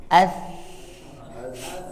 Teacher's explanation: Bunyinya bukan S, jadi tidak ada desisan yang tajam. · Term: tha